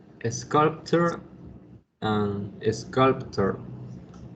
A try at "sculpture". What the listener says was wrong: Los dos sonaron igual. Este ture, así anótenselo ahí, como que es donde yo encuentro la palabra ture, hace chair, sculpture.